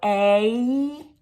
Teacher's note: a actually ends in the e sound